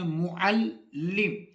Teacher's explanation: لفظ جو معلم ہے اس میں لام جو ہے وہ مشدد ہے, لام کو ہم 2 مرتبہ پڑھتے ہیں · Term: لام مشدد